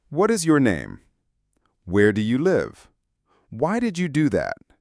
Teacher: For these questions, our voice usually goes down at the end. · The falling intonation signals that we are seeking information.